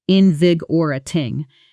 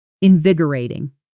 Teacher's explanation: Because this word has a specific rhythm, invigi or a ting. The stress lands hard on that second syllable. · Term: natural stress pattern